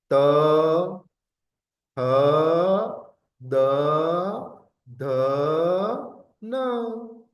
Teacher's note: जो आपकी जो टंग है ना वो टीथ को टच करने जाएगी